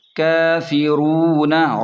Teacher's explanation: فا زیر فی، را واو پیش رو، نون زبر ن، کافرون، را کو موٹا پڑھیں کیونکہ را پر پیش ہے، اور واو مدہ بھی ہے تو اسے 1 الف کے برابر یا تھوڑا سا کھینچ کر پڑھیں۔